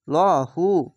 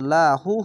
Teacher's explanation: আর লহু কেন হচ্ছে এই আল্লাহ লেখা ডান পাশের অক্ষরটি দেখেন উপরে জাবার আছে তার জন্য ল হু মোটা করে হবে আর এই জাবারটা বা নিচে যদি আসে তাহলে পাতলা করে লা হু হতো